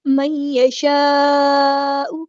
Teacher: نون ساکن کے بعد یا آیا ہے تو ادغام یہاں پر ہو رہا ہے، ادغام مع الغنہ